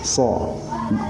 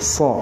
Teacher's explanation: Gigi atas dan gigi bawah masih berhadapan. Dia pangkal lidahnya naik atau isti'la. Loh, naik ke sini nih begini tuh. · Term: sod